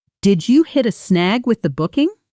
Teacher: It rises gently at the end, the way most yes, no questions do in English. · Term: intonation